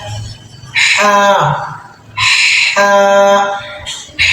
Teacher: ہا جو حرف ہے حلق کے درمیان سے ادا ہوتا ہے، جو ہمارے حلق کا درمیان والا حصہ ہے، اس کو ہا نہیں پڑھنا، یہ آواز نکالنی ہے، حلق کے بالکل درمیان سے، یعنی اس میں پیٹ کا استعمال نہیں ہوگا۔